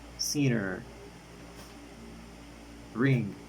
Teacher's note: According of the place of articulation it is velar. According of the manner of articulation it is nasal.